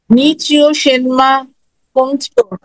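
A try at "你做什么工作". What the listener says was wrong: Right.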